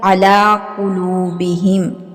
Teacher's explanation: قاف جو ہے یہ بھی حروف قاف یہ حروف مستعلیہ میں سے ہے، اس کو پر اور موٹا ہی پڑھا جائے گا۔